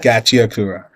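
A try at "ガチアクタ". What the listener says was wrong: Kura. Ta, ta, ta. That is no R. Gachiyakuta.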